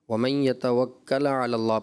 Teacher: وَمَن يَتَوَكَّل کی جو ساکن ہے، لام ساکن، مجھے ایسا لگا اس میں آپ نے کلکلا کر دیا